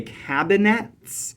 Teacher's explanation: cabinets um kind of pronounce it as a three-syllable word that where we stress the first and the last syllable with a middle unstressed